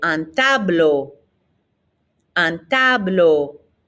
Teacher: e a u ending is an o sound in french